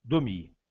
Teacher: Nós vamos falar então um E sem acento, quase que imperceptível